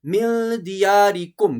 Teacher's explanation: یہاں نون ساکن کے بعد دال ہے تو یہاں پر بھی اخفا ہوگا۔ دیارکم میم ساکن کے بعد سا ہے، یہاں اظہار ہوگا، یہاں کوئی غنہ نہیں ہوگا۔